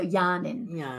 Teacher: Aboriginal English tends to prefer 'in' rather than 'ing' by default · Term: word final 'ing'